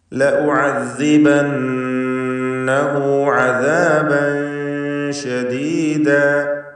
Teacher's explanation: ലഉഅസ്സിബന്നഹു, നൂൻ മുശദ്ദദയെ മണിക്കണം. ഷദ്ദുള്ള നൂനിന് 2 ഹറക്കത്തിൻ്റെ അളവിൽ ഗുന്ന നൽകി മണിക്കുക. പദത്തിൻ്റെ അന്ത്യത്തിൽ വന്ന ഹാഉ ദ്വമീർ മദ്ദുസ്സിലത്തി സൂറ നൽകി 2 ഹറക്കത്തിൻ്റെ അളവിൽ ദീർഘിപ്പിക്കുക.